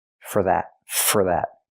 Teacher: We hear for pronounced as fur, because it's not a stressed word. For that. Not for that, but fur.